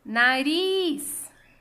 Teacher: Ris é a última sílaba tônica. É uma oxítona.